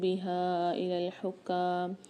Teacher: اموالکم بینکم بالباطل وتدلوا بها إلى الحکام، بہا میں ہا کے ساتھ الف اور مد ہے، یہاں پر بھی ہا 3 سے 4 الف کی مقدار کھینچ کے پڑھیں گے۔ حکام میں ہا کو کاف کے ساتھ ملا کے سختی اور جماؤ کے ساتھ پڑھیں گے اور کاف کو کھینچ کے پڑھیں گے ایک الف مقدار